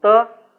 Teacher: You are tilting that, you are bending the tip of the tongue and then releasing it. So stopping there at the murdhan.